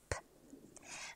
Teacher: the tiny puff of breath exploding from between the wet parts of your lips